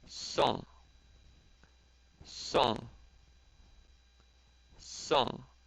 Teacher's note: there's an S in front of it. So it's song, and then it's fourth tone.